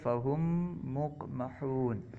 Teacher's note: number 60 ادغام شفوی، میم ساکن کے بعد دوسری میم آ جانے کی صورت میں میم ساکن کو دوسری میم میں مدغم کرنا